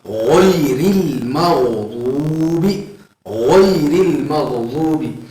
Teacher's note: غین کو تھوڑا سختی کے ساتھ ادا کیا جائے گا اور تھوڑا موٹا ادا کیا جائے گا